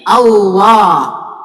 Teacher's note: apabila ada huruf yang sama dengan jenisnya makhrajnya maka diidgamkan menjadi Allah